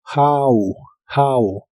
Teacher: La H se pronuncia como una J suave de español y la O de esta palabra se pronuncia como A